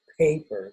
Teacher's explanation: the voicing of the vowel comes on late in English, so that you get the air for the vowel before the voicing comes on. And the air sound comes at the end of the P. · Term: voice onset time